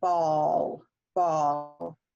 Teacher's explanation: it requires a rounding a more rounding of the lips